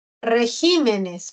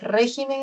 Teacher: Vemos que ahí el acento se ha desplazado a la sílaba G. Una cosa es régimen en singular y otra cosa es regímenes en plural.